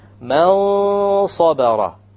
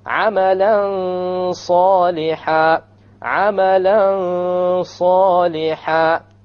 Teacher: You hide the noon behind the sad and you have a ghunnah.